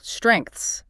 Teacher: It has a complex consonant cluster at the beginning, STR, a vowel in the middle, and another massive consonant cluster at the end, NGTHS. Yeah. It takes a full second of breath to articulate all those sounds.